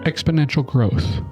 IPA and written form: ˌɛk.spə.ˈnɛn.tʃəl ˈgroʊθ (exponential growth)